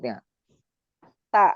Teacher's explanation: ujung punggung ujung lidah mengenai pangkal gigi seri pertama yang atas sambil mengenai gusinya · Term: huruf ta